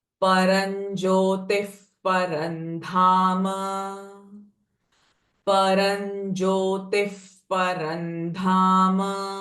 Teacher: Paran jyotif parandham. So visarga sound will change it to f, as the next sound is p. And here also parandham, n sound of anuswara. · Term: F sound